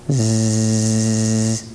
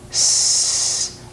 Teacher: A Z and an S are exactly the same sound. One is made with vibration in the voice box and the other isn't.